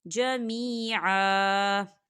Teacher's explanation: یہاں دیکھیں آپ کو چھوٹی سی توئی نظر آ رہی ہے تو یہ وقف مطلق کی علامت ہے، تو یہاں ٹھہرنا بہتر ہے۔ تو وقف کی صورت میں ہم اسے ایک زبر پڑھیں گے، دو زبر نہیں پڑھیں گے۔